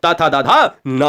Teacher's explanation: थोड़ा सा और आगे बढ़िए, यह दोस्तों दंत पे आ जाते हैं। ये दंत जो दांत की सहायता से बोले जाएं वो दंत यानी दंत स्पर्श व्यंजन कहलाते हैं